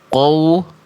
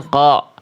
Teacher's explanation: Perhatikan huruf qaf di sini ya. Jelaskan dulu qaf fathahnya, jangan sampai qafnya keburu monyong karena terkontaminasi huruf waw.